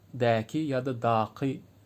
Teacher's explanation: daki eki türkmencede ünlü uyumuna göre deki ya da daki diye uzun söylenir bu E zaten uzun oluyor bizde uzun e sesi oluyor deki